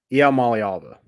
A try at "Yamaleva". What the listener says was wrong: You're missing the lay. Yeah, you're missing the lay. I know, but you're missing the lay.